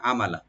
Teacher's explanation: আমালা আইনটাকে ওপেন করবেন আর মিমটাকে ওপেন করে লামও ওপেন থাকবে, এখানে এখানে এই শব্দ কোনো টান হবে না, আমালা এভাবে পড়তে হবে, আমালা।